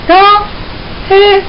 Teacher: 거성은 높은 소리죠. 라, 해 소리가 그것입니다